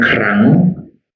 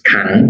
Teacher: The next change is the simplification of the kr cluster.